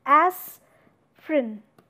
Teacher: However, the spelling of this particular word is aspirin, right? But this E sound is being omitted here. So, this is the process of elision.